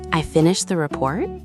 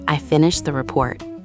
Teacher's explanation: Say, I finished the report, but let your voice drop down at the end, not rise up. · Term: falling tone